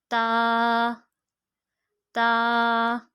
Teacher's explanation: ता ता का मखरज नोट कीजिए। ता जुबान की नोक और ऊपर के दांतों की जड़ से अदा होता है।